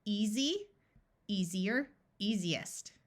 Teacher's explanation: this EA is going to use its most common sound of e and the S will have the z sound